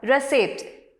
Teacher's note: The word kitchen, the stress is on the first syllable, kitchen. Then the next word, receipt, the stress is on the second syllable